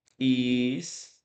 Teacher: é um ditongo que sai de uma semivogal para vogal. É um ditongo crescente.